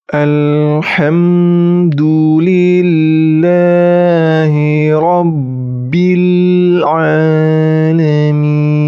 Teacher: Huruf ain harus jelas huruf ainnya. Seringkali kita mengubah huruf ain dengan huruf hamzah. · Alamin itu dibaca, panjangnya dibaca 2, 4, atau 6 harokat. Karena hukum bacaan mad arid lis sukun.